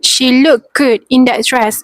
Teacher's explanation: The word looked can be pronounced as look when the t is dropped